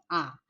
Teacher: আ উচ্চারণের বেলায় আ জিভের অবস্থান অনুযায়ী মধ্য এবং ঠোঁটের উন্মুক্ত অনুযায়ী বিবৃত আ, এবং এদিকে উচ্চতা অনুযায়ী নিম্ন আ।